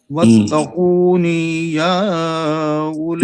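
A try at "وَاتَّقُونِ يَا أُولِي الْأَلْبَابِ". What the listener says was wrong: نون کو لمبا کر گئے آپ نون کے کسرہ کو کھینچ گئے ہیں. پھر پڑھیے واتقون.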